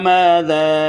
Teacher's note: ذا تھوڑا سا لمبا کریں گے، ارادہ کے حمزہ کی وجہ سے اس کے اوپر ذا کی الف کے اوپر مد ہے.